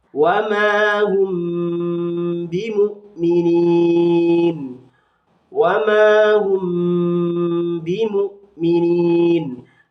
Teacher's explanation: Ada fathah diikuti alif, ini disebut dengan bacaan mad tabi'i panjang satu alif. Ada mim sukun bertemu dengan huruf ba, disebut dengan bacaan ikhfa syafawi, maka harus dibaca dengung dan dilamakan.